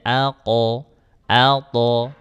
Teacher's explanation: Yang kedua arah pantulan. Huruf qof sama huruf tho itu arahnya ke fathah.